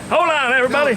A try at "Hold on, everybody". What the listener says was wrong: No, not hold. Don't pronounce the D. Yes, you were. Just saying hold.